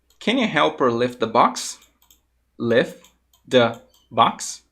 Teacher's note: esse T ele vai ficar mudo e eu vou falar simplesmente lif The Box